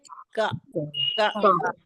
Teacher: जबान की जड़ का जो शुरुआती हिस्सा होता है, जहाँ से जड़ शुरू होती है, उसको हम ऊपर के सख्त तालु से लगाते हैं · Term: काफ